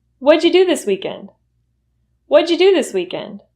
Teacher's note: What did you will reduce to what'ja. What'ja. What'ja.